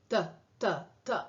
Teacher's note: de la boca en el caso de las dentales la punta de la lengua está tocando la parte de atrás de los dientes